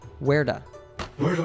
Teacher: the T sound is between two vowels so it turns into an American T sound